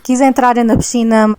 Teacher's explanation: No sotaque do Alentejo, notou-se aquele ênfase anasalado no final das palavras.